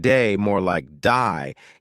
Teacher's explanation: They may say words like day more like die, giving words a slight twist.